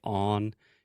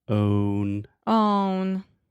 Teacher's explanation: You almost say on. You really have to have the O sound, that long moving vowel.